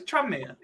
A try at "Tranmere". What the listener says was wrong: No, it's Tranmere. So you don't read the N and the M kind of blur into one. Tranmere. Whereas you're saying Tranmere. It's like there's a little gap between those 2 letters. Tranmere.